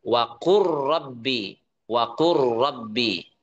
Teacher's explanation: Jadi bukan wakul rabbi, tapi kita idghamkan waqur rabbi.